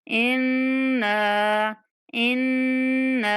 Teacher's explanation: इन्ना नून पर गुन्ना करते हुए नून को खींच के पढ़ेंगे। इन्ना इन्ना इन्ना कह के नहीं आगे चलना।